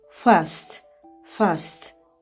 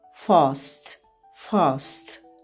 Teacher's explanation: Fast bu American English. Amma Britaniya variantında fast. Fast uzun a.